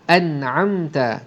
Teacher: mim mati bertemu dengan ta, izhar syafawi. Jadi mim tu pun dibunyikan dengan jelas. · Izhar halqi, bunyi nun jelas.